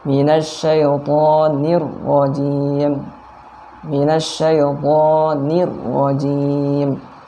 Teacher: Minasyaitonir, nirro. Nah, rohnya tebal karena dia berharokat fathah